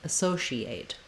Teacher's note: still has the same vowel sounds the same rhythm and stress it just has an sh sound rather than an s sound for letter c